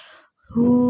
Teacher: Hu ini namanya mat silah qasirah karena ada hu yang dibaca panjang